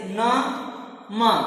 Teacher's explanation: ऐसे व्यंजन जिनका उच्चारण में नासिका का प्रयोग होता है, वह अनुनासिक कहलाते हैं